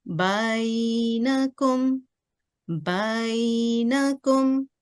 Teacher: So there is a semicircle sound which is we can say that it's easing the sound of ba towards ya sakin. Okay, so again it's for two count, one count for ba with for fatha, and then one count for leaning it.